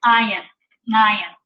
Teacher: It's pronounced by taking the back of your tongue and pressing it up against the back of your throat.